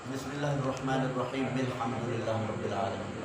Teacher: بعض مقامات کے اوپر جو حمزہ وصلی ہے اس کو درمیان سے اسے گرا دیا جاتا ہے، یا یوں کہہ لیں کہ اسے حذف کر دیا جاتا ہے۔